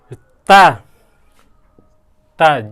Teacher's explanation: जीभ और दांत का स्पर्श हो रहा है तो दंत